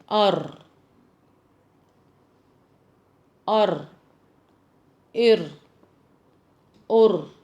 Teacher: اوپری حصہ مطلب اوپر کے دانتوں کا اوپری حصہ، دانتوں کی جڑ، اوپر کے دانتوں کی جڑ کو لگتا ہے تو را ادا ہوتا ہے